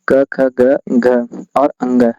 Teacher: ये क वर्ग का उच्चारण स्थान कंठ होता है।